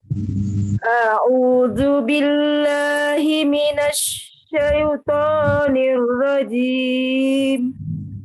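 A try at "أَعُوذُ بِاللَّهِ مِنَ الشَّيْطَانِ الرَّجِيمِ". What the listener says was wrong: Ya, tasdidkan rohnya nirrojim, nirro. Tasdidnya.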